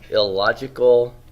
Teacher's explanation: What process is that where the N becomes an L before an L? That is assimilation.